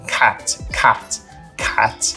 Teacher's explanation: as consoantes explosivas elas meio que sopram entre a própria consoante e a próxima vogal